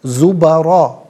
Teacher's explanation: را پر زبر ہے، را کو پر کر کے پڑھا جائے گا